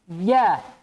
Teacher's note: di antara sifatnya dia jahar tidak ada desisnya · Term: Jim